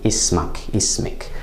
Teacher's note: One important difference is that in MSA, the vowel, as in your name, for example, to a man is ka, comes after the sound, the consonant of the kaf, whereas in Shami and Masri, we hear that vowel before the kaf